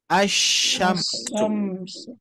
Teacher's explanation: lam ini ada tapi tidak dibaca. Maka terjadilah bacaan asyamsu. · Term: idgham syamsiyah